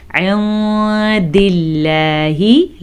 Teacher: ساتھ ہی آگے نون ساکن کے بعد دال ہے جو کہ حروف اخفا میں سے ہے تو ہم نے نون ساکن کو چھپا کے ساتھ پڑھا، چھپا کے غنے کے ساتھ پڑھا۔